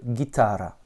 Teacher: avec un accent tonique sur le A du milieu.